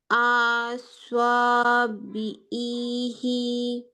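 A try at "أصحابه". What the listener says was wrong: আতে টান হবে না, আবার বলো।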